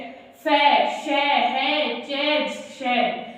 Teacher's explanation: इन्हें बोलने में संघर्ष लगता है, किसी को टच नहीं करते हैं, ये टच नहीं होते हैं। देखिए फै किसी से भी टच नहीं हो रहे, शै नहीं हो रहा है टच, है, जै और शै ये क्या है, संघर्ष है। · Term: संघर्षीय